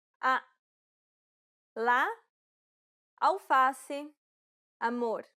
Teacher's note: this vowel sound is considered an open a sound because the jaw is low and the mouth is wide and open